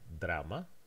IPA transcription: dɾama